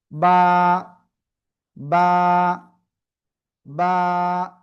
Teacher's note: এই যে দুই ঠোঁট, দুই ঠোঁটের ভিজা অংশ থেকে এই অক্ষরটা উচ্চারণ করতে হবে, এক আলিফটা নিয়া।